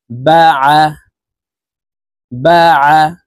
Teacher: আইন হরফটি হলকের মধ্যখান থেকে চাপ দিয়ে উচ্চারণ করতে হবে, কারণ আইনের মখরাজ হলকের মধ্যখান থেকে হবে।